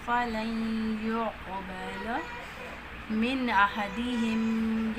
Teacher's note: کا یا میں ادغام ہو رہا ہے، ادغام صغیر متقاربین ناقص، قاف کے آواز کو موٹا پڑھیں گے، اور قاف حروف قلقلہ میں سے تو حروف قلقلہ جتنے بھی ہیں ان کو جنبش دے کر پڑھتے ہیں، ہلا کر پڑھتے ہیں